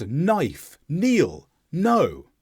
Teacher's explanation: Words such as knife, kneel, know, all follow this rule where we start on the N sound and we leave out the K. But again, this only applies if they occur in the same syllable, just as with G and N. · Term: K is silent